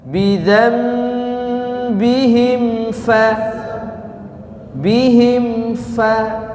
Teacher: Nun sukun ketemu ba, ada gunnahnya juga, ya.